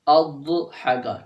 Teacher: ضاد کی آواز دال کے ساتھ نہ ملے، ان دونوں میں فرق رکھنا ہے بس آپ نے، چاہے اس ضاد کو جتنا موٹا آپ کر دیں، ٹھیک ہے۔